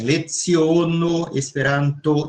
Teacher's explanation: Então, este O, em geral, ele é mais para fechado do que para aberto. Certo? Aqui no Brasil, a gente usa sempre mais assim, leziono, esperanto, sempre mais fechado, tá? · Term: O médio